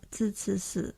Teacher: colloquial Singapore Mandarin features a merger of alveolar and retroflex sibilant initials, so that zhi, chi, shi is almost categorically realized as zi, ci, si.